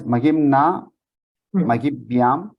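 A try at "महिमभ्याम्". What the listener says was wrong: Mahimabhyam. Mahimabhyam. Only the Nakara gets deleted. Here again, Mahimabhyam, Mahimabhyaha. We hear the Makara, only the Nakara gets deleted. In Mahiman, so Mahi, Ma, and Akara is also there. Only the Nakara gets deleted. Mahima, and then Bhyam, Bhihi, Bhyaha, everything.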